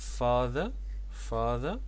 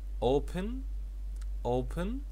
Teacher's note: الستريس موجود في التلات كلمات دول على الفيرست سيلابل